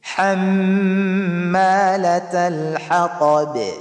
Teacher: pag magwaqaf ka, maghinto ka, ay dapat sakin yung vowel ng ba.